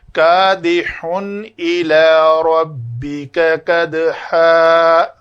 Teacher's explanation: 2 زبر والی تنوین پہ رکیں گے تو صرف اس کو مدہ کریں گے، یعنی 2 حرکت کے برابر